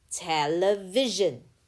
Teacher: Te. The letter E here makes the schwa sound